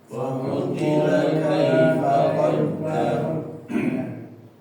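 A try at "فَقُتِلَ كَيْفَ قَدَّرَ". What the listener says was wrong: Ya, di sini Bapak lamnya jangan dipanjangkan ya, jangan dipanjangkan ya. Faqutila ka langsung ya. Jangan lanya jangan kepanjangan. Faqutila kaifa la kaifa. Dan ya-nya ya di sini ya mati ya, kai.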